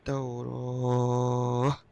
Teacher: Ta marbutah dia akan jadi ha